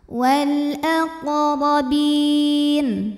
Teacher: Huruf qaf sukun disebut dengan qalqalah sughra, karena huruf qalqalah sukunnya asli dan ada di tengah bacaan. Dibacanya dipantulkan dengan pantulan yang kecil, tapi tetap tebal karena qaf huruf tebal.